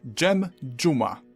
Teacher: We've covered Z turning into Ż, and now this can merge with a D into J.